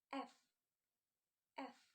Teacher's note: The teeth touch the layer leaf and air is blown out without voice vibration. It is voiceless.